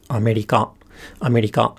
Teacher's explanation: it starts low goes high and stays high and then again the particle attaches high